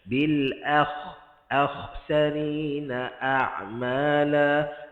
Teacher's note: Bil hamzah nipis, akh. Kha tebal. Kha jangan senyum, hamzah senyumkan.